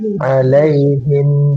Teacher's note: diakhiri dengan mim sukun. Nah, berarti dia ada gunnah nafisah. Alaihim, ada dengung yang ringan di situ, ya.